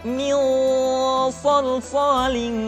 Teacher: Yang kedua ketemu dengan sa, suara menebal, min salsalin.